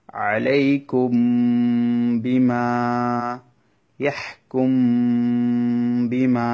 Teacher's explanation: মিম সাকিনের পরে যদি বা আসে তখন মিমটাকে গুণা করে পড়াটাকে ইখফায়ে শফাউই বলে।